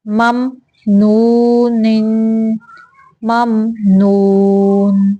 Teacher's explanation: میم زبر میم مم، نون پیش واو نو، مم نو، نون دو زیر نن، مم نونن۔ یہاں پہ میم پہ غنہ نہیں کرنا، یہاں پہ اظہار کا قاعدہ ہے، اظہار شفوی۔ تو صرف اظہار کا معنی ہوتا ہے ظاہر کرنا، تو ہم صرف میم کو ظاہر کر دیں گے، واضح کریں گے کہ یہاں پہ میم آیا ہوا ہے۔